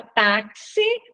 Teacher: na palavra táxi o X tem som de KS então uma letra Só que representa dois sons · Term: dífono